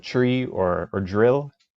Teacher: consonant combinations of, say, tr and dr be pronounced as chr or jr